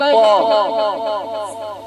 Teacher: जब प कहेंगे तो आपका दोनों होठ सटेगा